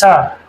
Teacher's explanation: फिर है ल श, ये सलेट वाला सा है मित्रों दंत शकार, और तवर्ग दंत, इसको सा को बोलेंगे सा, तो सा दंत ध्वनि निकलती है दंत से